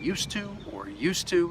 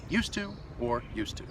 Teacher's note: you're saying used to or used to it's the same pronunciation the D and the T they blend together to create one sound